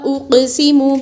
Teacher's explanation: اقسم کے قاف پر قلقلہ ہوگا